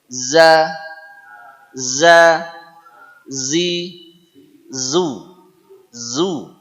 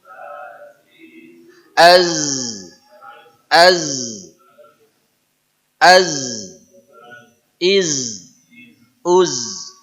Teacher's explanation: Jadi huruf Zai adalah huruf z yang diucapkan tidak pakai desis